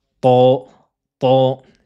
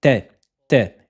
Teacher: Le son va être coincé à ce niveau-là. La langue donc va former un creux et va gonfler vers l'arrière du palais. Ça donne to, to. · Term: emphatisation de la lettre